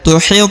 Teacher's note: huruf tho berharakat sukun maka dibaca pantul ya karena dia adalah salah satu huruf Qalqalah atau huruf pantul maka dibaca tuit maam tuhit bihi maam tuhit bihi huruf Hi